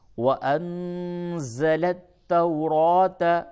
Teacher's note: نون ساکن کے بعد زا ہے، اخفا ہوگا